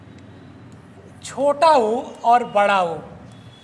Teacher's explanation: छोटा ऊ और बड़ा ऊ। ये दोनों का उच्चारण ओठ से होता है।